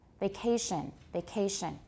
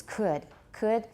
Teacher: it's still stressed it's still aspirated but it's not as strongly aspirated as could